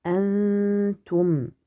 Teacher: noun est caché sur le ta avec une nasillement une ghunna léger ou bien nasillement léger